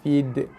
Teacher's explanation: Hujung lidah tekan belakang gigi, lepaskan keluar bunyi de. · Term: qalqalah